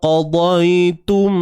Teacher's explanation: Tum, dan mestilah kena dengung dengan kadar 2 harakat. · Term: Idgham syafawi